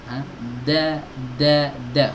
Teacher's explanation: Huruf dal itu ada di ujung lidah ketemu dengan pangkal gigi seri atas. Di tempat kita mengucapkan huruf ta.